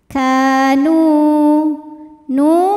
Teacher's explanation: fathah maka Kaf panjang dua harakat kau NU Ma Thobi'i doohiri karena ada wau sukun didahului harakat damah maka Nun panjang dua harakat